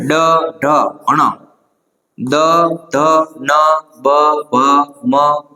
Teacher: જે વર્ણોના ઉચ્ચારણ વખતે સ્વરતંત્રીઓમાં કંપન થવાથી એટલે કે ધ્રુજાટી આવવાથી નાદ કે અવાજ ઉત્પન્ન થાય છે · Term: ઘોષ વર્ણો